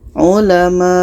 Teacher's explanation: Kita panjangkan 6 harkat baru matikan huruf yang terakhir.